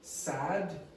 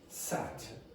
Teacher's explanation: The t is not aspirated, there's no voicing. The d has voicing, the vocal cords vibrate.